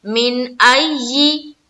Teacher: یہاں پر جب آئی کریں گے تو تھوڑی سختی کرنی ہے کیونکہ یا کے اوپر تشدید ہے، اور تشدید میں ایک قسم کی سختی ہوتی ہے تو تھوڑی سختی کرنی ہے، ڈالنی ہے.